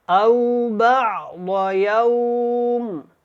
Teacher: یوم، میم کو ساکن کر دیں گے، اس کی نون تنوین یہاں پہ ختم ہو جائے گی